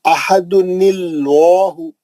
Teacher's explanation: ये लाम जलाला का लाम है जो हमेशा मोटा और बुलंद पड़ेगा